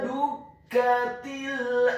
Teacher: Huruf kafnya dibaca tipis, ditasydidkan, ditekankan, fathah 1 harokat.